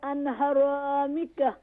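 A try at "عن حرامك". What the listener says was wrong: عن حرامک, no an. عن عین pronounce properly.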